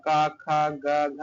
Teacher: घ का उच्चारण स्थान दोस्तों जो है कंठ है